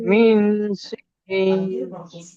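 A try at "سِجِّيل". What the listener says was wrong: সিজিন না, সিজিল। সিজিল, জিল জিল, জিম ইয়া লামজের জিল। সিজিল নয়, সিজিল, লাম লাস্টে লাম আছে, মিন সিজিল।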